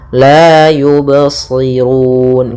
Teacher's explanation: mengalir suara ba-nya, tidak putus dan tidak pula saktah dan tidak pula ada tambahan hamzah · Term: qalqalah